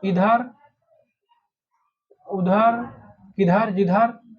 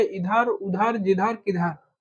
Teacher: निरानुनासिक, इनका उच्चारण केवल मुख से होता है